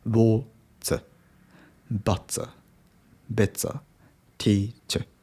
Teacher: You have to pronounce schwa sound, instead of R.